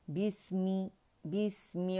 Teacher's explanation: سین کا ہمس واضح کریں گے. بسمی اور رخاوہ بھی ہے, آواز کا چلنا بھی محسوس ہوگا